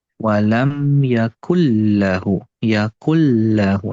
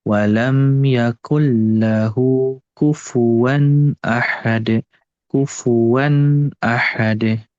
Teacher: diayun ya, supaya tasydid lamnya itu jelas